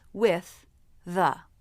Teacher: The lips round for the W. When the lips part, the inside of the mouth looks dark. That's because the tongue was lifted in the back for the W sound. As the tongue comes forward, the tip heads right for the position between the teeth.